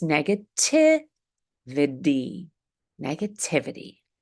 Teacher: the T in the suffix ity, ity, is a light D.